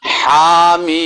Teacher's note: ہا کے بعد رکنا نہیں بلکہ ہا کہہ کے آگے ساتھ میم